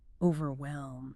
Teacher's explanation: The tricky bit here is often the H. It's very soft, almost silent. Overwhelm. Not overwhelm.